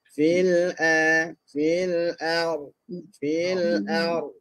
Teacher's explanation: Okey, hati-hati di sini lagi sekali pada fil a, a tu nipis, ra tu dengan tebal